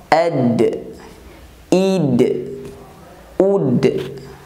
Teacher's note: Huruf dal suara tertahan saat pengucapannya, terutama ketika huruf dal berharokat sukun.